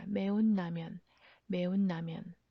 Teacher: Notice the 니은 받침. Because of 니은 받침, 리을 changes to 니은.